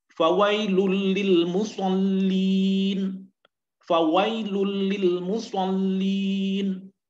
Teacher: Ya, jadi nun sukun ataupun tanwin bila bertemu dengan huruf lam atau ro, maka hukum bacaannya adalah al-idgham bila ghunnah, dimasukkan bunyi nun sukun atau tanwin ke dalam huruf lam atau ro tanpa dengan dengung